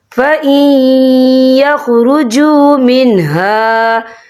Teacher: فَإِن يَخْرُجُوا مِنْهَا، یہ دیکھیں فَإِن، یہاں نون ساکن ہے، نون ساکن کے بعد جو ہے یا آ رہا ہے، اور یا جو ہے حروف ملون میں سے ہے تو یہاں پر ادغام ہوگا، تو ہم اسے تھوڑا سا غنّے کے ساتھ پڑھیں گے۔